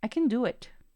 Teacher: ven como le di la mayor fuerza de voz al verbo principal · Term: reducción de sonido